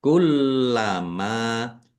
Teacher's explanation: Kullama mim fathah alif mad thobi'i panjang dua harakat.